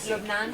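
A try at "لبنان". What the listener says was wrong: I'm not quite hearing the long vowel there. Say it again. Still kind of short. Make it longer. Make it longer. Longer. Make it really, really long.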